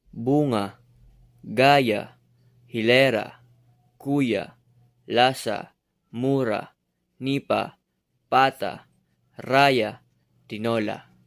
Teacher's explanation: binibigkas ito ng dahan-dahan at may diin sa pagbigkas sa ikalawang pantig buhat sa hulihan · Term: malumay